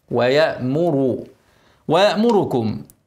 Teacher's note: اسكن الهمزه واوعى ا تقلقل وضم الميم مرققه لكن اضم الراء مفخمه ويامر ويامر ويامر ويامركم